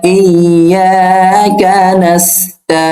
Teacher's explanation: আইনে 3 আলিফ টানতেছি, কেননা জবরে পরে যদি খালি আলিফ হয় তাহলে হয় 1 আলিফ মাদ, পেশের পরে যদি জজমালা হয় ওয়াও হয় তাহলে হয় 1 আলিফ মাদ, আর এই জেরের পরে যদি জজমালা ইয়া হয় তাহলেও হয় 1 আলিফ মাদ, অর্থাৎ মাদ মানে টেনে পড়া।